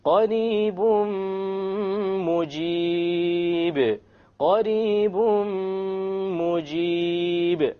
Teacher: We drop the end sound and we merge the tanween immediately onto the meme with a ghunna. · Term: idgham with ghunna